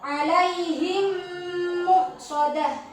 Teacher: mim mati bertemu mim. Jadi, harus dibaca dengung ya. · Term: idgham mimi